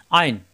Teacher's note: তখন এটা আইন কণ্ঠনালীর মাঝখানে